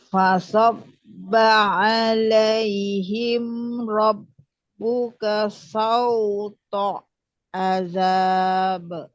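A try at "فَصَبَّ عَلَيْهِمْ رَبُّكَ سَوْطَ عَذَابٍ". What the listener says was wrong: jangan jeda langsung aja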